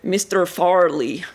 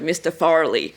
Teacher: he runs the syllables together and links them with a very strong R sound. So it sounds like one word, Mr.